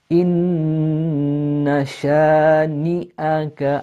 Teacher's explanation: you're going from the noon to the sheen quite quickly. Inna shani'aka, again, sha, upper jaw going up.